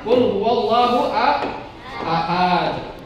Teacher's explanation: Wallah itu tasdid, kemudian ahad ada huruf tipis dan diakhiri dengan qalqalah kubra